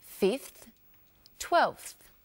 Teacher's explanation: The ones with a v sound, 5 and 12, change their v sounds to f sounds.